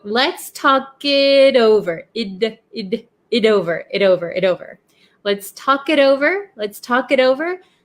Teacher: the T in it becomes a flap T because it is sandwiched in between 2 vowels